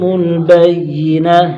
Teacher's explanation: تا کو وقت کی صورت میں ہا ساکن سے بدل دیں گے